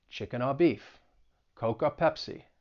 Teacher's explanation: Something else with the Boston accent is the OR combination may also sound like aw. And this is true even if you're talking about the conjunction or, like chicken or beef.